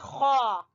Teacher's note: گلے کے اوپر والے حصے سے خا